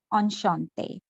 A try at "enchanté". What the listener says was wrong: On shante nahi. This n sound is not very prevalent. Nasal. Enchanté. Enchanté.